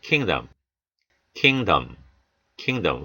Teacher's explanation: 모음 약화죠. 그래서 약화되는 모음들은 어에 가까운 소리가 나죠.